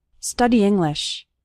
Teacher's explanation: study English study English those two words kind of run together the E from study and the I from English kind of combine